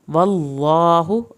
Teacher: अल्लाह के नाम को पुर करके पढ़ना है, मुंह भर के पढ़ेंगे